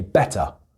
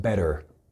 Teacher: the T, when it's in the middle of a word, tends to be pronounced like a D